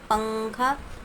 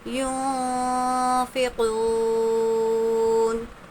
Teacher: نون کی آواز کو ہم ناک میں چھپائیں گے۔ جیسے ہم پنکھا بولتے ہیں اسی طرح یونفقون، یہاں پر یون اس طرح سے ساؤنڈ نہیں آنا چاہیے، نو کی آواز کو ہم کو نہیں نکالنا ہے بلکہ نون کی آواز کو ہم کو ناک میں چھپانا ہے۔ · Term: اخفا